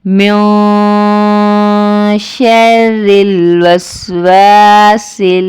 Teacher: اخفا کریں گے، آواز کو ایک الف کے برابر ناک میں چھپا کر پڑھیں گے